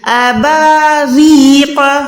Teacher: یہ جب بھی را کے نیچے زیر آئے گی تو وہ را باریک ہوگی